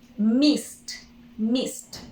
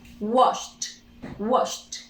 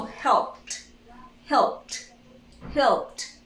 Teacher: Okay, simple past. We add the ed, we do not pronounce the e, we pronounce only t.